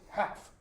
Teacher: the L is usually dropped so it's half